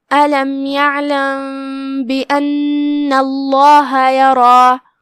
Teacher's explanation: کلمت یرا میں یہاں را پہ زبر ہے تو اس کا دھیان رہے، اسے بھاری آواز میں پڑھنا ہے